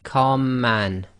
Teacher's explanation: the two M's sort of merge together and you end up holding the two M's for a little bit longer and effectively not taking a pause between the two letters the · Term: gemination